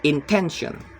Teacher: The root word is intent and the suffix is eon. The stress is on the second to last syllables